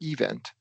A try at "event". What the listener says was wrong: Stress on the second.